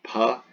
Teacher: yeah pH like in philosophy so it should be more appropriately a P as you know puh but with a sharp bursts of air behind it that's the H so huh so not so much an F